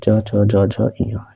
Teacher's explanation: तालू और जीभ के स्पर्श से बोले जाने वाले जो है वर्ण तालव्य कहलाते हैं